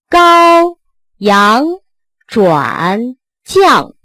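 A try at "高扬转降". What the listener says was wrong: 阳 没 发 到 位 ， 高 阳 ， 阳 不 是 阳 啊 ， 不 是 阳 ， 是 阳 ， 最 后 一 定 是 控 制 ， 失 去 控 制 的 字 音 都 是 错 音 。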